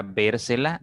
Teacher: donde está la mayor fuerza obviamente está en la tercera sílaba contando de derecha a izquierda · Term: palabra esdrújula